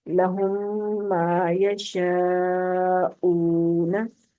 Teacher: तो मीम मुशद्दद आ जाएगी तो वहां पर इदगाम होगा, पहली मीम दूसरी मीम के अंदर दाखिल हो जाएगी, यानी साकिन मीम मीम मुशद्दद के अंदर दाखिल कर दी जाएगी